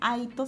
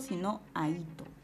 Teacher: la mayor fuerza de voz está en la cerrada. Entonces aquí estamos viendo el contexto de un hiato acentual.